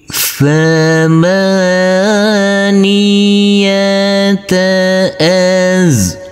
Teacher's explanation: Huruf waw boleh kita baca dengan panjang 2, 4 maupun 6 harokat. Huruf jim harus kita pantulkan karena ini adalah bacaan qalqalah, harus dipantulkan.